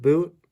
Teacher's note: You could think of the English word boot, the vowel there, although I know that when I pronounce it at least, I start a little bit more central, and then it's a diphthong that slides toward the back of my mouth and gets more closed.